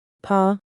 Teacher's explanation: The name of the letter is P. It is a strong sound pronounced loudly with both lips. It is the same as the first sound when pronouncing pa.